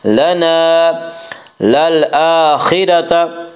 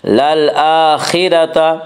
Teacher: خا کو پر پڑھیں گے، خا حروف مستعلیہ میں سے ہے، حروف مستعلیہ 7 ہیں جن کا مجموعہ خصہ ضغط قز ہے، جو ہمیشہ ہر حال میں پر پڑھی جاتی ہیں۔